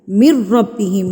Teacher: آپ نے کیا کرنا ہے، میم کو ڈائریکٹ جا کے تشدید سے ملا دینا ہے. من ربہم، نون کو مدغم کر دینا ہے، نون کو نہیں پڑھنا آپ نے ڈائریکٹ میم کو را سے ملا دینا ہے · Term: ادغام